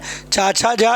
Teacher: इनका उच्चारण स्थान तालु से होता है। इन्हें स्पर्श संघर्षी व्यंजन भी कहते हैं।